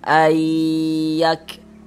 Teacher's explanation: disertai dengan gunnah atau didengungkan. Jadi suaranya itu kita tahan, kita panjangkan sejenak.